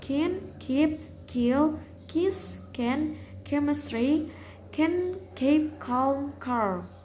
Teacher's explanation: Voiceless velar stop sound K